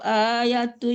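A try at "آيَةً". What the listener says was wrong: Ayatan. Bukan tui tapi tai. Tai tanwin fathah ya.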